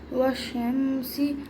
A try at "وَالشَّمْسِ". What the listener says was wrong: شمسی نہیں ہوگا یہاں پہ، غنہ نہیں ہوگا یہاں پہ، جلدی پڑھ جائیں گے. والشمسی رکنا نہیں ہے میم کے. والشمسی والشمس شین کو جماعوں کے ساتھ پڑھنا ہے غنہ نہیں کرنا ہے. والشمسی یہاں